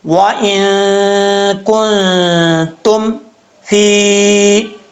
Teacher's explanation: ایک الف کی مقدار غنہ کر کے پڑھیں گے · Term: نون ساکن کا اخفاء